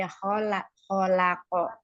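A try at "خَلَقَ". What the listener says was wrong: Jadi pangkal pangkal lidahnya aja dilepas tapi ininya bibirnya enggak usah ko gitu.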